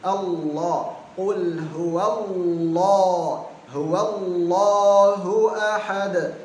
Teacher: lam al jalalah kalau sebelumnya fathah atau dhamma jadinya tebal tafkhim